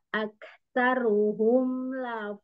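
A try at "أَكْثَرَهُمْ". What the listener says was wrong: Aksarohum ronya fathah. Aksarohum.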